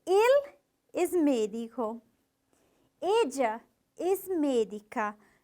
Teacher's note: Esse E tem que sair fechadinho, mesmo tendo acento. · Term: la vocal E